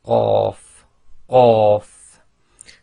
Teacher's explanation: the back of your tongue effectively touches the very back of the soft palate and blocks the air before you release the sound.